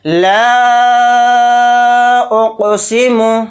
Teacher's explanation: اس مد منفصل کو ہم 3 الف کی مقدار کھینچ کر پڑھیں گے